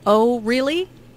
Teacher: Notice the rising intonation on really. This shows that the speaker is surprised.